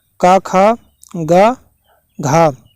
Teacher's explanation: कंठ में का, खा, गा, घा आता है।